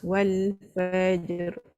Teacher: Jim dengan ra tu dia bercantum. Bersambung lah sebab dia dah melantun kan.